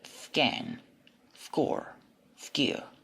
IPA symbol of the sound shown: k